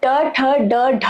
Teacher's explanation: जब हम ट ठ ड ढ बोलते हैं तब हमारी जीभ ऊपर की तरफ फोल्ड होती है। मुड़ती है। इसलिए इसे इसे मूर्धन्य न कहते हैं।